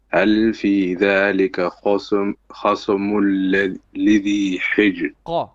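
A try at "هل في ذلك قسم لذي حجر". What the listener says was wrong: قسم لذي حجر. You're not saying your qaf properly, you're saying a kha or something else. It's qaf, qa.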